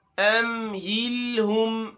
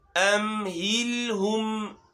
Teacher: ہلکا سا ہم اس کو ناک میں لے کے جائیں گے، ام کو اور ہم کو